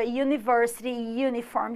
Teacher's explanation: O som de U é como se fosse um Y, que é uma consoante. Na verdade, ela é como semivogal ou consoante, é um ia, ia.